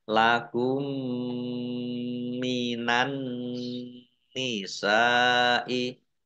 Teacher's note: dibaca mendengung masuk ya ke huruf mim berikutnya ditandai mim nya ada tasdidnya. Ya, mendengung mim ditahan 2 harokat. · Ditandai nunnya ada tasdidnya. Nun tasdid sama dengan mim tasdid. Itu dibaca mendengung atau gunah. Ditahan 2 harokat. Minan nisa'i sin fathah alif mat tobi'i, tetapi karena bertemu dengan huruf hamzah dalam satu kata maka menjadi mat wajib muttasil, dibaca panjang harus 5 harokat. · alif lam samsiyah. Karena tidak dibaca alif lamnya. Langsung masuk ke huruf berikutnya yaitu nun. Ditandai nunnya ada tasdidnya. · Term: idgham mimi